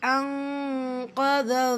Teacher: நூன் சுக்கூனுக்கு அப்புறமா காஃப் இஹ்ஃபா நூனை பாதியாக மறைச்சி குன்னா செஞ்சு ஓதணும்